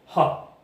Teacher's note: 목청 소리는 목에서 마찰을 가지면서 바로 세게 튀어나오는 소리 말합니다.